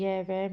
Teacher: य, व में जीभ, तालु तथा होठों का स्पर्श क्षणिक और कम होता है। इसलिए इन्हें ईर्षद यानी तनिक, सै पृष्ठ व्यंजन कहते हैं। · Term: अर्ध स्वर